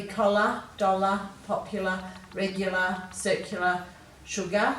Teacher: you have to remember that you're using a r here for that schwa sound at the end of these words